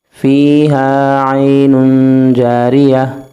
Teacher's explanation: یہاں پہ دو زبر کی پیش ہے، تنوین ہے تو یہاں پہ غنہ کریں گے